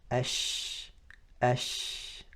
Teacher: the sound of a sheen spreads within the mouth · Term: tafashi